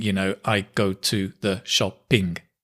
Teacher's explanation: she is following a syllable timed style rather than stress timed